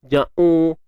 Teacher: Jim pada atas ja, kemudian u. Huruf ain ni pastikan kita tak bunyikan melalui hidung. Ja'u. Dia sebab huruf ain ni kerongkong kan, tengah kerongkong.